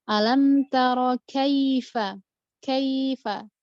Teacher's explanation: mad harfu lain itu letaknya di tengah-tengah kalimat dan panjangnya konsisten bisa 1,5 atau 2 harokat. Tapi biasanya kita pakai 1,5.